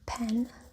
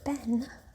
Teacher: they are both bilabial stops, they differ in voicedness